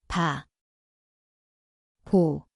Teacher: 마, 모, Narito ang titik na. 비읍, Ito ay tunog B, ang lugar ay ang parehong labi.